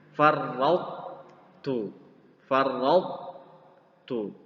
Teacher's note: masih ada sedikit sifat dari to yang tersisa walaupun tidak diqalqalahkan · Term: idgham nakis